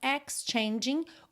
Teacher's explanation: o g final não é pronunciado